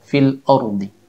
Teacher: Kesalahan yang biasa terjadi pada saat mengucapkan huruf hamzah ketika membaca Al-Quran adalah menebalkan atau mengubah suara hamzah yang berbunyi A menjadi O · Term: menebalkan suara hamzah